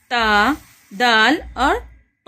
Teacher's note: ता नरम आवाज़ के साथ, दाल थोड़ी मजबूत आवाज़ के साथ हम अदा करेंगे, और ता ये भारी आवाज़ के साथ मोटा और पुर पढ़ेंगे इसे · ज़बान की नोक ऊपर जाएगी, ऊपर के अगले दांतों के पीछे वाले हिस्से को लगेगी, वहाँ से आवाज़ निकलेगी। वहाँ से ता, दाल और ता की आवाज़ आएगी। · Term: हुरूफुन नितइय्यह, हुरूफ नितइय्यह